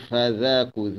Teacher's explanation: Za huruf zal di hujung lidah. Zal hujung lidah tidak ditebalkan, tidak dikeraskan, dilembutkan hujung lidah.